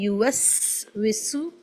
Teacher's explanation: سین جہاں جہاں آئے ساؤنڈ آف وسل ایڈ کرنی ہے